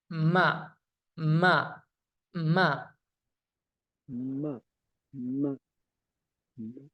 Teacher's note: bertemunya antara kedua bibir dalam keadaan tertutup disertai dengan dengung yang keluar dari khayshum, yaitu pangkal hidung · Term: huruf mim